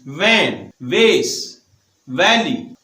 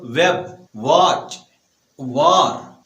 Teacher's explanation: और जब W produce करते हैं तो होंठ बाहर की तरफ रखते हैं। · V साउंड जब हम प्रोड्यूस करते हैं तो हम जो लोअर लिप होता है वो अपर टीथ के साथ टच करते हैं।